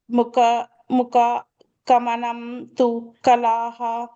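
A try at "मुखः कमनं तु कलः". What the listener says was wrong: Kalaha, Mukaha, and the Visarga is there. Kalaha.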